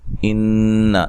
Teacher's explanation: نون مشدد پہ غنہ ضروری ہے